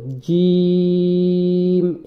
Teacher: জিম জিমটাকে উচ্চারণ করার সময় জিহ্বার মধ্যখান তার বরাবর উপরে তালুর সঙ্গে মিশায়। অর্থাৎ জিহ্বার মধ্যখানটা শক্ত করে জিম এভাবে উচ্চারণ করতে হয়।